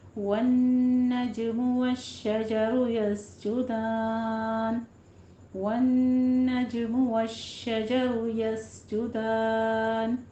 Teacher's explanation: रॉ मुफ़ख़म है हमारी, पोर पढ़ेंगे। यस जुदान, सी में सीटी की आवाज़ आएगी, जीम के ऊपर जमा है, होंठ गोल कीजिए।